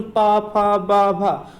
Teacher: पा वर्ग जो आपका बोला जाता है वो हमारे ओंठों के द्वारा बोला जाता है